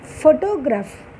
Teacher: ఫోటోగ్రాఫ్ స్టార్టింగ్లో స్ట్రెస్ వచ్చింది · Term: స్ట్రెస్ షిఫ్ట్